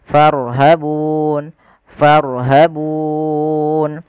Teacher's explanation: Sukun yang timbul karena waqaf yang sebelumnya ada huruf mad. Boleh kita panjangkan dua harakat pada lafal bununnya. Boleh empat harakat dan boleh pula enam harakat. Maka farhabun farhabun. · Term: mad arid di sukun